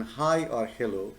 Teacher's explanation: The sound ho as in hi or hello is voiceless and also usually included in the set of fricatives.